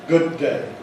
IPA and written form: ˈgʊd̚ ˈdeɪ (good day)